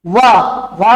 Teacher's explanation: और वा का उच्चारण स्तर क्या है, दंतोष्ठ है। वा के उच्चारण में क्या होता है, दांत और ओष्ठ दोनों का प्रयोग होता है, इसलिए इसे क्या कहा गया है, दंतोष्ठ कहा गया है।